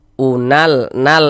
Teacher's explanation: Alif lam qamariyah itu disebut juga dengan izhar qamariyah, ya, atau izhar qamari. Karena cara membaca huruf lamnya ini dibaca izhar, ya, dibaca jelas, dibaca terang. Unal, nal, terbaca kan huruf lamnya nal. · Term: izhar qamariah